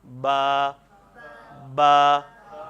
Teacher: دونوں ہونٹوں کا تری والا حصہ جب ہم آپس میں ملائیں گے تو با ادا ہو جائے گا۔